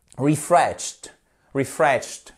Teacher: J'exagère sur le T à la fin, mais c'est bien un T hein, pour que vous entendiez bien la prononciation du ED